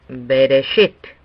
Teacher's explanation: Be, de, shit. Sobre la base de la premisa de que Bereshit no tiene ninguna marca distinta, la última sílaba sería subrayado. Entonces, lo pronunciaríamos Bereshit.